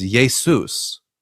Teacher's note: There's no sh sound in Greek. Um you The closest you can get to it is an s sound with the letter sigma. So, you get iota, eta, um uh sigma, omicron, upsilon, you get Yesou.